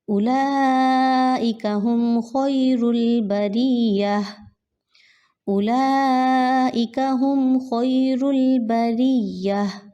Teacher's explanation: ہا کو آپ نے حلق میں سے نکالنا ہے